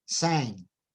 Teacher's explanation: K and G at the end are different in voicing and sang at the end is different because it is a Velar nasal